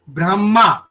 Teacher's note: हमें माँ आखिरी में पूरा सुनाई दे रहा है और ह साइलेंट सुनाई दे रहा है